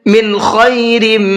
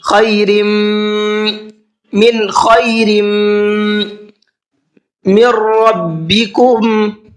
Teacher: من خیرم، خیرم کے اندر یہاں پر را کے نیچے تنوین ہے اور تنوین کے بعد میں میم ہے، تو یہ ادغام یرملون کا قاعدہ ہے، یہاں پر تھوڑا سا میم میں غنہ کر کے پڑھیں گے۔